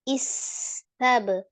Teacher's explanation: Ada al-hamsnya mengalir nafas, ada roghahnya mengalir suara, kemudian ada as-safir desisnya ya. Istab, ba sukun, qalqalah, qalqalah di tengah ya, qalqalahnya berarti qalqalah yang kecil, yang sughra